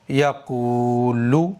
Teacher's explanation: پیش والے حرف کے بعد میں واو ساکن آئے گا تو پیش والے حرف کو کھینچیں گے، لیکن پیش والے حرف کے بعد میں واو ساکن نہیں آئے گا تو نہیں کھینچیں گے، تو قاف کو کھینچنا ہے، لام کو نہیں کھینچنا ہے۔